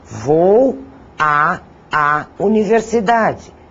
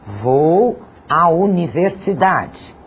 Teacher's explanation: Não precisamos pronunciar os dois As, pronunciamos apenas um. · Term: crase